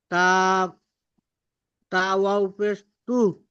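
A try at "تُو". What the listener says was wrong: তা, ওয়াও পেশ তু, এটা ওয়াও মাদ্দা টান দিয়ে বলতে হবে।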